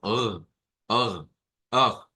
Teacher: de acuerdo al alfabeto fonético internacional, no es gutural realmente, es uvular. Pero nosotros cuando hacemos ese sonido como ugh, ugh, se estimula la parte gutural también. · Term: R gutural